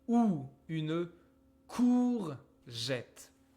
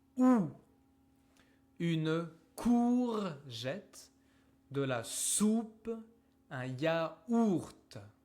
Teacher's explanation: it's like the opposite of a stretch. My mouth is super small, like OU. ou. It's super small like this.